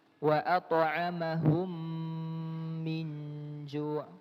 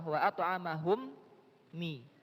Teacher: Mim yang pertama yang sukun masuk ke huruf mim yang kedua yang harokat. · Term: idgham mimi